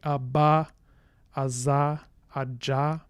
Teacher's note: those obstruents are all voiced